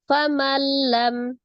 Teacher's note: فَمَنْ لَمْ, ada nun sukun ketemu dengan huruf lam ya, idgham bila gunnah. Dilebur tidak disertai dengan dengung.